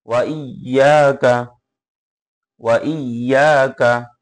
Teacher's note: ওয়া জবর ওয়া, ওয়াউ জবর ওয়া, হামজা ইয়া জের ই, ওয়া ই, ইয়া আলিফ জবর ইয়া, ওয়া ইয়া, কাব জবর কা, ওয়া ইয়াকা, ওয়া ইয়াকা, ওয়া ইয়াকা। হ্যাঁ, ইয়াতে একবার টান হবে, ওয়াতে বা হামজাতে টান হবে না, কাফেও টান হবে না। ওয়া ইয়াকা, ওয়া ইয়াকা।